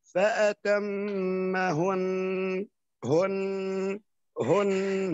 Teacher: عندما نقف على أتمهن هذه النون تساوي حرفين فالغنة تبين الحرف الثاني ، نقول فأتمهن هن هن هكذا، نقف على هذه الطريقة لأن · مشددا. Baik, karena di situ ada tasdid, jadi pengetahuan untuk semuanya ketika berhenti di dalam nun yang bertasdid, silakan dipanjangkan dua harokat karena musyaddadah atau tasdid menandakan dua huruf yang berdampingan, sehingga ketika